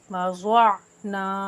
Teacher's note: वज़अना में ज़ाद पुर हरूफ है, इसको मोटा पढ़ेंगे और नून को एक अलिफ के बराबर खींचेंगे।